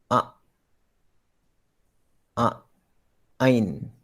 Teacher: Di manakah tempat keluar huruf Ain? Tengah kerongkong. Tengah kerongkong. Ni tengah kerongkong.